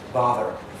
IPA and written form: ˈbɑːðɚ (bother)